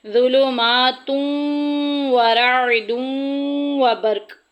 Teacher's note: ظلمات ورعد وبرق، دونوں جگہ ایک ہی قاعدہ جاری ہو رہا ہے، تنوین کے بعد واو آ گئی ہے، لہٰذا دونوں جگہ یرملون باغنہ ادغام ہوگا